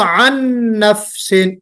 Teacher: یہاں پہ نون ہے جو اگلے والے نون میں مرج ہو رہا ہے، تو اس نون کو ہم نہیں پڑھ رہے، یہ نون کمپلیٹ مرج ہو رہا ہے کس میں؟ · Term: ادغام کامل